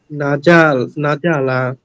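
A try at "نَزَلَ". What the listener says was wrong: না যা ভাইয়া, জিম হয়ে যাচ্ছে কিন্তু, না যা যা না যা। দেখেন না যা বললে আমাদের মাখরাজ উচ্চারণ হচ্ছে না, যা জিবার আগা নিচের দাঁতের গুড়াতে, না যা না নাজালা, নাজালা নাজালা মাশাআল্লাহ, নাজালা নাজালা।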